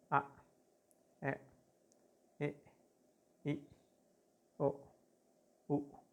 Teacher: siguen las vocales glotalizadas o cortadas